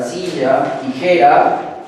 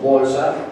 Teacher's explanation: en la penúltima sílaba lleva la mayor fuerza de voz · Un porcentaje muy elevado de todas nuestras palabras que nosotros expresamos van a llevar la mayor fuerza de voz, ya no en la última sílaba, como hemos estado explicando, sino en la penúltima sílaba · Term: palabras graves